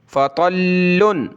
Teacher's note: तो को मोटा करें, लाम के साथ मिलाएंगे